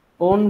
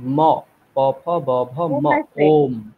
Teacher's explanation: ওম ওম মকার, স্পষ্ট মকার বলতে হবে। ওম ওন বলছেন, নকার বলছেন আপনি।